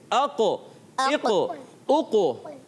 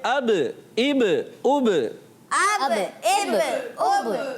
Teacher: جب ساکن ہوں گے. جب حرف قلقلہ ساکن ہوتے ہیں تو قلقلہ خوب لوٹ کر ظاہر ہوتا ہے، خوب واپس آواز آتی ہے